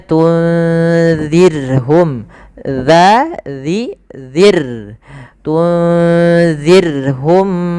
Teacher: Di sini bacaan ikhfa ya, harus dibaca dengan jelas, jelas, disamarkan suara nunnya ke huruf zal tadi sebagaimana anzartahum. Kemudian zirhum jangan kita tebalkan, jangan dibaca tunzirhum misalkan, atau dibaca zalnya dibaca dengan zai, tunzirhum atau tunzirhum.